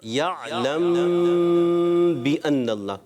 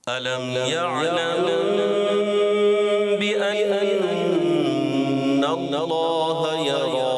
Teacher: میم ساکن میں با آ رہا ہے نا، تو وہاں پر اخفاء شفوی ہو جائے گا، غنہ کریں گے.